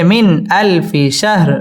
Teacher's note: ইজহার গুন্না ছাড়া স্পষ্ট করে পড়তে হবে